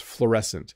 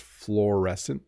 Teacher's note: But it's fluorescent. Again, you really just make one vowel sound, fluorescent at the beginning. It's two letters, UO, but it's just fluorescent.